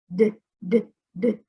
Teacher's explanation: This is just like the sound of the T, but we turn our voice box on. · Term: sound of the D